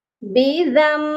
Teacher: یہاں پر بھی نون ساکن کے بعد با ہے اور اسی لیے ہم نون ساکن کو نہیں پڑھیں گے بلکہ میم کو پڑھیں گے